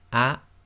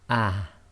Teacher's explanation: both the Hamza and the soft ha originate from the same place